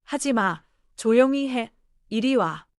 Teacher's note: The last syllable gently steps down.